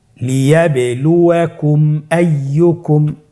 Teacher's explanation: মিম সাকিনকে স্পষ্ট করে গুণনা ছাড়া পড়তে হবে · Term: ইজহারে শাফাউই